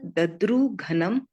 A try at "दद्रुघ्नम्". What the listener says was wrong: दद्रुग्नम, ऐसे पढ़िए, आधा घ, दद्रुग्नम। घ पूरा नहीं बोलना है, घ पे जोर नहीं देना है, दद्रुग्नम, आधा घ।